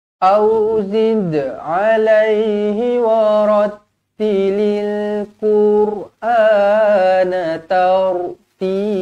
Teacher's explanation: ra dibaca tebal kerana sebelumnya berbaris atas